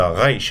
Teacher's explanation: the reish, which is a R sound, but from your throat